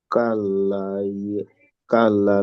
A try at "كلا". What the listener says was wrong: কাল্লা, এখানে তো টান হবে। কাল্লা।